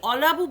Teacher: লয়ের ওপরে কিন্তু স্ট্রেসটা পড়ছে, লয়ের ওপরে ঝোঁকটা পড়ছে, এবং অটা আমরা খুব একটা ব্যবহার করছি না